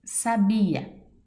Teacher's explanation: Sílaba tônica, bi, paroxítona.